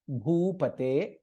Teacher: भा is महाप्राण and it is दीर्घ